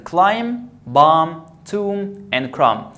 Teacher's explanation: So when the B is after M, I don't pronounce the B. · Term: silent B